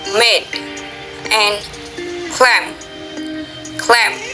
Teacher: Oral passage is blocked by closing the lips, bilabial.